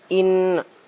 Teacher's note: Karena ada huruf nun yang bertasdid, cara membacanya masuk dengan mendengung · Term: guna musyaddadah